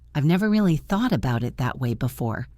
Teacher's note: Did you catch the stress on never and that?